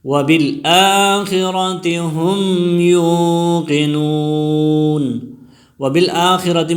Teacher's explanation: وبالآخرۃ میں حمزہ پر کڑی زبر ہے، اس کو 1 الف کی مقدار کھینچ کر پڑھیں گے